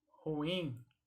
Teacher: ela é uma palavra oxítona, portanto o in é a sílaba que deve ser pronunciada mais forte.